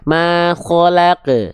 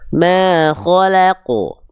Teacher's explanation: Bukan khalaq, tapi khalaqu. Tebal. Pangkal lidahnya diangkat.